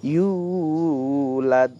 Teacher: Tetap kita pantulkan juga dalnya karena dia qalqalah